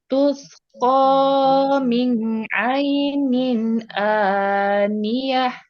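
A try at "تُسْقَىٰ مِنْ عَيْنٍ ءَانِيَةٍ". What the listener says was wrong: Dua harokatnya panjangan sedikit. Min cukup sedikit.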